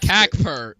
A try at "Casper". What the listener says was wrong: Casper. The C is pronounced as an S.